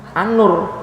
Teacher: ketika alif lam ketemu Nun dibaca Annur idgham